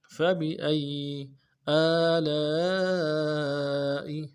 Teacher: الف مدہ کے اوپر مد اصلی ہے، تین الف دال میں کھینچیں گے، حمزہ کو نون سے ادا کریں گے۔